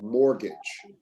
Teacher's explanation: remember the t is silent